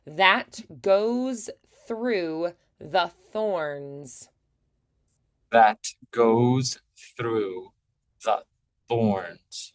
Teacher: that is voiced, through is unvoiced, the is voiced, thorns is unvoiced